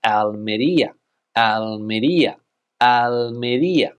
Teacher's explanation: important to know where the stress in this word is it's on the I